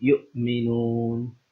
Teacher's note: read this hamza with a jerking sound or a sound like a hiccup